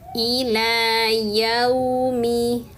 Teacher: Ila yaumi lamnya panjang dua harakat karena fathahnya berdiri. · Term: Mad thbi'i